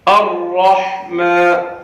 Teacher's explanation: دیکھیے زبان جو ہے بیچ میں گھومنی چاہیے را کو ادا کرتے وقت. الرحمن، را کو موٹا کر کے پڑھنا ہے اور حا کو اپنے مخرج سے ادا کرنا ہے.